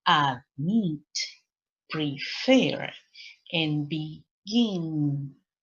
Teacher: Lección número 6 dice que el verbo tiene dos sílabas nuevamente, pero ahora la sílaba que está acentuada es la última · Es un verbo que tiene dos sílabas y que está acentuada la segunda sílaba. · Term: segunda sílaba que está acentuada